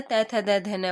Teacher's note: दंत में आएगा त, थ, द, ध, न वाला